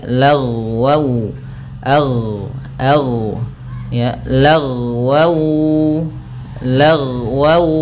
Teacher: lafal ghain ketika dia sukun jangan sampai memantul, karena huruf ghain tidak ada sifat qalqalahnya